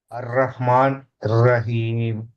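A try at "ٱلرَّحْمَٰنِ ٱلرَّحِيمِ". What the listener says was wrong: కలిపి చదవాలి.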